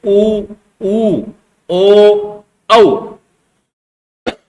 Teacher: Number 1 आता है आपका वृत्ताकार, वृत्तमुखी और वर्तुलित। वे स्वर जिनके उच्चारण में होठों का आकार गोल हो जाता है